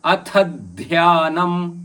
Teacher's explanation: ಮಹಾಪ್ರಾಣದ ಥ ಥ ಮೇಲೆ ಅಘಾತ ಇದೆ ನೀವು ನೋಡಿರಬಹುದು ಯಾಕಂದ್ರೆ ಮುಂದಿನ ಪದ ಮಹಾಪ್ರಾಣದ ಧಕ್ಕೆ ಯ ಇದೆ ಹೀಗಾಗಿ ಅಥದ್